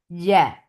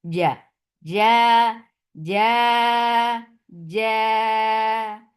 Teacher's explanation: Jim has very shidda sound. Like you are not escaping any sound from the makhraj. Ja. If you will let the sound flow, then it will be cha.